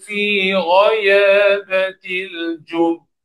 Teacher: Wakaf pada ba yang bersabdu. Jadi jelaskan sabdunya dulu kemudian baru kita qalqalahkan.